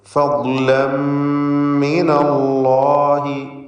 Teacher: അല്ലാഹ് എന്ന ഇസ്മുൽ ജലാലയിലെ ലാമിനെ തടിപ്പിക്കണം, തഫ്ഖീം ചെയ്ത് ഉച്ചരിക്കണം